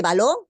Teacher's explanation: La mayor fuerza de voz está en la última sílaba. Pero la otra regla me dice también que es una palabra aguda precisamente cuando tiene esa mayor fuerza de voz, esa sílaba tónica en la última sílaba.